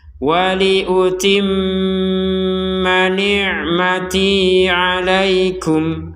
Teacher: Mim bertasydid sama dengan nun bertasydid, sama-sama dibaca dengan dengungan.